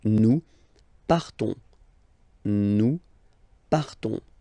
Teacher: classic ending ons, you don't pronounce the s, you just have this on sound nasal